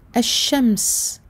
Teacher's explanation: La lettre shin qui appartient au huruf, aux lettres shamsiyya. Donc je ne lirai pas la lettre lam ici. Elle sera muette et je passerai directement de la hamza au shin.